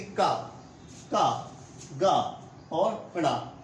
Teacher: जैसे कि हम बोलते हैं, जैसे कि मान लो अल्पप्राण में जैसे कि का, गा और ड़ा, तो मुंह से क्या निकली, वायु बहुत कम मात्रा में निकली